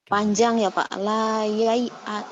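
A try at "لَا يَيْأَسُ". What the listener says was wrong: Lin. Pendek. Layai as. Lin ya, huruf lin nggak panjang enggak.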